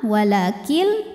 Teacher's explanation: kemudian ada hukum idgham bilaghunah karena nun sukun menghadapi huruf lam maka nun sukun dileburkan ke lam · nun sukun menghadapi huruf lam, maka nun sukun dileburkan ke lam, walakil tidak disertai dengungan, jadi cukup ditekan. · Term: idgham bila gunnah